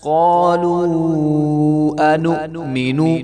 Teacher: قالو کی واو کے اوپر جو ہے مد ہوگی تو اس کو بھی 3 سے 4 الف کے برابر لمبا کیا جائے گا